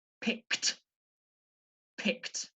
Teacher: Remember, for those of you who studied the past simple, regular verb endings, pick is a regular verb, so it has an ed ending, and because it's got the sound K at the end of the verb pick, with the ed ending, that makes a kt, kt sound. Okay, so after my K, I move into a T, T sound. So you end up with it sounding like this.